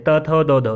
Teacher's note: जब हम त थ द और ध को बोलते हैं तो हमारी जो जीभ होती है वो दांत से टच करती है, इसीलिए इनको दंत्य व्यंजन बोला जाता है, ठीक है।